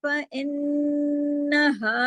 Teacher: فَإِنَّهَا میں نون پہ تشدید ہے، نون پہ بڑا غنہ کیجیے اکمل،